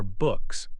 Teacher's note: K is voiceless and stops.